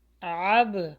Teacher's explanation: با کے اوپر جزم ہے تو یہ باؤنس بیک ہوگا یعنی قلقلہ ہوگا یہاں پہ